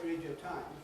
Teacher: losing a syllable or losing a sound by changing something from a vowel into a semi-vowel, from a vowel into a, well, it's from U into a W and from an E into a yard and so on. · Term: compression